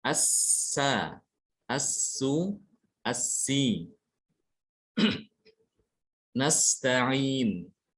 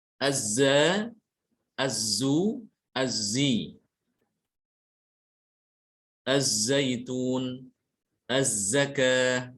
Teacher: Pangkal lidahnya tidak naik sehingga suara yang dihasilkan itu tipis. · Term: huruf zai sama sin